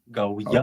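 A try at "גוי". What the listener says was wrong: Okay. Yeah, Gauya, right?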